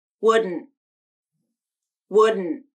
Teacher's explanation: same as wooden using nasal plosion in the final syllable but you add a stop t at the end and the final syllable is a little shorter